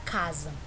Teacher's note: notamos que a sílaba cá foi pronunciada mais fortemente do que a sílaba usar por isso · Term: sílaba tônica